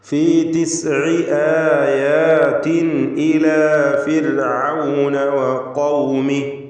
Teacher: ഫിർഔൻ എന്നതിലെ റാഇന് തർക്കീഖാണ്, സുക്കൂനും തൊട്ട് മുമ്പിൽ സ്ഥിരപ്പെട്ട കസ്റുമുണ്ട് എന്നതിനാൽ ഫീ തിസ്ഇ ആയാതിൻ ഇലാ ഫിർഔന വഖൗമിഹി.